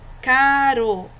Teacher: Quando nós pronunciamos uma palavra que o R ele tem um som fraquinho, ele vai só dar uma tremida na ponta da língua.